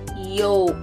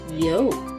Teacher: it would make sense for the L sound to be heard just like it is in the color. But it's not. It rhymes with joke and folk.